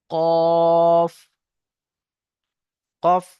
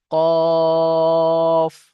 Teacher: কফ উচ্চারণ করার সময় ঠোট দুটো গোল হয়ে যাবে